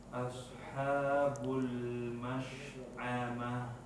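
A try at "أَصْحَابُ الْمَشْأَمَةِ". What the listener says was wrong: Salahnya di mana? Hamzahnya jadi ain.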